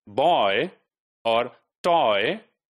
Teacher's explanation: we've got another this closing diphthong which ends with a and the starting is oh right the half rounded Oh sound and the ending is a in words like boy or toy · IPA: ɔɪ